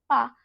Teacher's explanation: आपके होंठ आपस में स्पर्श कर रहे हैं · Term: होष्ठ